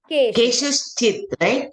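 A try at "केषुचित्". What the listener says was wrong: No, just Keshuchit. Keshuchit. Don't put a cha.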